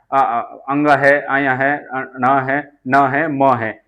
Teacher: नासक्य व्यंजन है। इनका इनका उच्चारण करते समय वायु, मुख और नाक दोनों से निकलती है। इन्हें नासक्य व्यंजन कहते हैं।